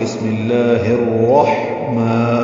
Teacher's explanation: ہا ساکن پہ ہمس ہے، ہلکی سی سانس کی آواز جاری رہے گی اور وسط حلق سے ہا ادا ہوگا